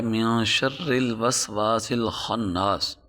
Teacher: نون ساکن اور تنوین کے کچھ قاعدے ہیں، ان میں سے ایک قاعدہ یہ بھی ہے کہ اگر نون ساکن کے بعد 15 حروف اخفا ہیں، ان میں سے کوئی ایک حرف آ جائے تو نون کو ہم مخفی کر کے پڑھیں گے۔ تو یہاں ہم نون کو مخفی کر رہے ہیں، اس کی وجہ یہی ہے کہ نون ساکن کے بعد شین ہے، اور شین ان 15 حروف میں سے ہے جو 15 حروف اخفا ہیں، اس لیے ہم نون کو یہاں مخفی کر کے پڑھیں گے۔